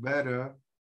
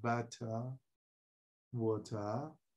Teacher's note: The R is silent. In British, the R is silent.